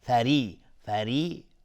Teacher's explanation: فری اینجا را ترقیق است چون کسره داره.